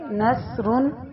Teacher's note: سین کی آواز باریک اور سیٹی والی ہوتی ہے